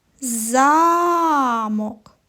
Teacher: поставимо наголос на перший голосний звук